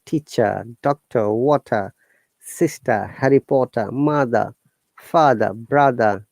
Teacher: there is no r sound at the end